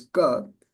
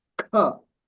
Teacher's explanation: So ka, the first letter in the alphabet in the consonant group is ka, which is non-aspirated. The next one is kha, which is aspirated.